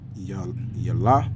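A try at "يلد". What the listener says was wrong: That's a D. Lud. Yalada.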